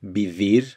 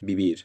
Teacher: ladino pronounces the v like the english v